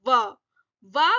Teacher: ओष्टे, होठों के पास से साउंड आ रही है। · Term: ओष्ठे